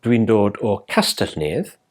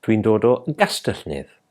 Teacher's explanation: So if I wanted to say in Welsh that I come from Castell Nedd, a soft mutation would come into play. So the K in Castell Nedd would mutate softly to G. So rather than dwi'n dod o Castell Nedd, we'd say dwi'n dod o Gastell Nedd.